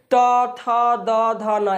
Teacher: त थ द ध न यानी कि जीव जो है हमारे दांतों में टच कर रहा है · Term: त वर्ग